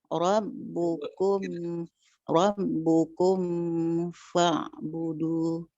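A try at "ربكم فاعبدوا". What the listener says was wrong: Tidak boleh lama dan tidak boleh terbawa huruf setelahnya. Rob, mimnya sempurnakan dulu huruf mimnya, baru ke huruf fa. Rabbukum fa'budu. Rabbukum fa'budu. Tadi yang saya kasih catatan, yang salahnya seperti ini. Rabbukum fa'budu, sudah masuk ke makhraj fa, itu yang tidak boleh.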